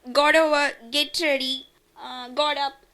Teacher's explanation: T is a glottal stop in phrases.